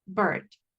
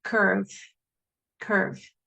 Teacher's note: esa vocal es como que usted la ignorara y solo pronuncie la R. Va a ser R.